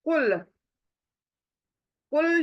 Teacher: कुल, कुल जब पढ़ते हैं लाम को हिलाना नहीं चाहिए। कुल लाम एक ही सिंगल आवाज होनी चाहिए और हलक में से होना चाहिए।